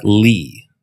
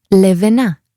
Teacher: in English when we say a word like Lea the back and front of your tongue both come up towards the roof of your mouth